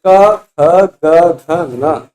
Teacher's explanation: इसीलिए थोड़ा सा मतभेद है, ऐसा लगता सीधे कंठ से ही हवा आ रही है, पर क्योंकि ये सारे वर्ण स्पृष्ट हैं, इसलिए ऐसा जब आप बोलेंगे तो फील ऐसा होगा कि जो अंदर से हवा का प्रेशर आ रहा है वो जीभ के जड़ पे टकरा रहा है। हाँ में वैसा नहीं लगे, हाँ, क, ख, ग, ह, ह और क में अंतर लगेगा। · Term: कवर्ग